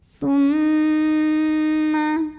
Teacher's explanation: mim didengungkan, bunyi M-nya tahan sampai ada getaran halus ke hidung. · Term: gunnah musyaddadah